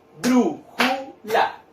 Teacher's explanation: 3 sílabas. ¿Dónde cargo la voz? En la sílaba bru. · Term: palabras esdrújulas